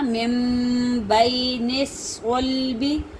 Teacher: نون کو ہم نہیں پڑھیں گے بلکہ میم کو جو ہے وہ جو با کے اوپر جو چھوٹا سا میم ہے ہم نے تبدیل کر دیا، نون کو نہیں پڑھا بلکہ میم کو پڑھا